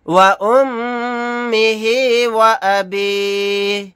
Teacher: यहाँ पर मीम पर तशदीद है, यहाँ पर गुन्ना करके पढ़ेंगे। आयत करने की सूरत में हा को साकिन बनाकर पढ़ेंगे।